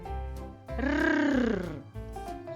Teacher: Горло вібрує звук р. Дзвінкий.